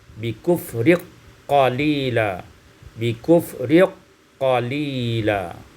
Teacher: idghamul kaf fil qaf, diidghamkan kaf pada qaf dengan idgham kamil